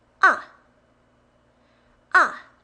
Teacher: And then downhill, fourth tone.